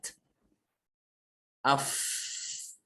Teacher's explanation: ketika mengucapkan af terasa, ya, nafasnya itu mengalir dengan kuat. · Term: sifat hamas